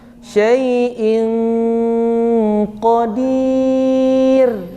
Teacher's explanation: ini tarkik ini rnya ditipiskan saja senyum saja sampai ujung ro suaranya habis syaaiin Qodir gitu aja